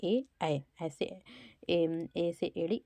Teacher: कंठ से बोलते हैं और तालू से बोलते हैं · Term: कंठ तालू